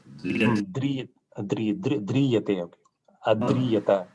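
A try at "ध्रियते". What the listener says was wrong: You are saying it, making it long. Driyate.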